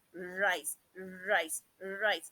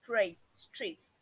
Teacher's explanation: In rise, there is a vibration, but in pray, there is just a single tap. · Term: roll